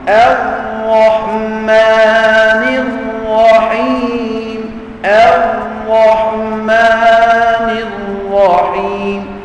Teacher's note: Tak ada baca Ar-Rahmanir Rahim, tak ada getar. Huruf ra yang bersabdu disembunyikan getar lidahnya.